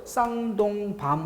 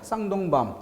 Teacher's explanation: 똑같은 나무 열매를 뜻하는 글자인데 세 번째 글자에 놓였죠. 긴 발음이 없어집니다.